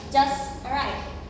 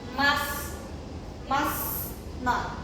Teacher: And the T sound disappears because it is trapped between other heavy consonant. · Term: T deletion